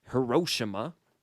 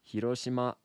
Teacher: in Japanese it's like a combination between R D and L all at the same time